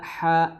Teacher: ha di pertengahan tenggorokan ya. Makhrajnya sama seperti huruf ain.